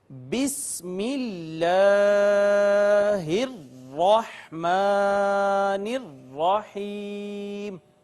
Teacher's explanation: یہ سین ہے، سین پر ہمیشہ سیٹی کی آواز آتی ہے۔